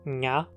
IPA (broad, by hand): ɲa